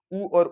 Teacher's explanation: तो ऊ याद कैसे रहेगा कि अपने को तीसरे में या लेंथ तोड़नी है, तो ऊ का उच्चारण ध्यान दीजिए कि ऊ और ऊ बोलने के लिए अपने को होठों को गोल करना पड़ता है। इसके लिए हम ओष्ठी में आ जाएंगे सीधे कि ऊ और ऊ यहां रहता है।